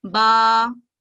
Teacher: अलीफ मदिया से पहले वाले हर्फ पर हमेशा फतह की हरकत होती है, जैसा कि आप देख रहे हैं कि बा के ऊपर फतह की हरकत है, और इसको जब हम अलीफ मदिया के साथ मिला के पढ़ेंगे तो अलीफ मदिया की वजह से बा को 2 सेकंड का टाइम देंगे